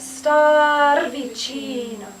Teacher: The A should still have more tension. Yeah. It's just kind of at the last minute.